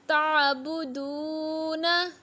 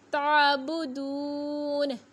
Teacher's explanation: नून को साकिन पढ़ेंगे, ज़बर नहीं पढ़ेंगे। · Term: वक़फ़